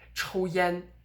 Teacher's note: yen in chinese and you would here what you do is you would stress both morphemes both parts of the word